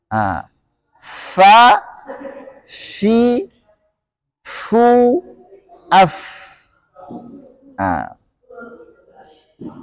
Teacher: Atrafis sanaya al musyrifah, ujung gigi seri depan yang atas. Berarti pengucapannya fa, ada hamasnya, fa, nggak boleh pa, harus fa. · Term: huruf fa